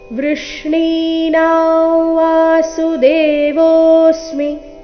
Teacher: ಅನುಸ್ವಾರದ ಉಚ್ಚಾರಣೆ ಇಲ್ಲಿ ನಾಸಿಕವ ರೀತಿ ಬರಬೇಕು ಕಾರಣ ಮುಂದಿನ ಶಬ್ದ ಅವರ್ಗೀಯ ವ್ಯಂಜನ ವದೊಂದಿಗೆನೆ ಪ್ರಾರಂಭ ಆಗ್ತಾ ಇದೆ